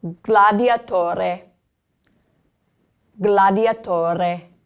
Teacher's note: you're not going to do it from the back of your throat, but you are going to pronounce that G